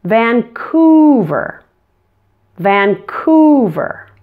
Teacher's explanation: back and round your lips when you make this sound ooh since the U is in a stressed syllable it's especially important to stretch out this sound